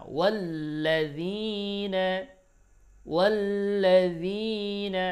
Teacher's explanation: তাসদিদওয়ালা হরফকে একটু সময় নিয়ে ধরতে হয়, যেহেতু তাসদিদওয়ালা হরফটা দুইবার উচ্চারণ হয়। এই জন্য একটু সময় বেশি লাগে, তবে এটাকে অনেকেই মাদ মনে করে, এটা মাদ হবে না।